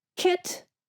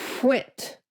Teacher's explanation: Round your lips for that w sound. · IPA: /kw/